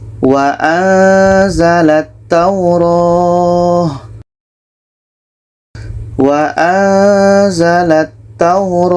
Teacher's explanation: nun mati bertemu Za contoh wa anzalat Taur wa anzalat Taur ketika sebut huruf nun kita sudah merasakan huruf Za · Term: ikhfa Hakiki